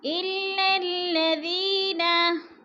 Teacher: لام دونوں باریک ہیں اور دونوں لاموں کے اوپر شد ہے، مشدد ہے، یہ سختی سے پڑھیں گے. اور ذی پہ یا مدہ ہے، 2 حرکات کے برابر یا مدہ کو کھینچ کر پڑھنا ہے.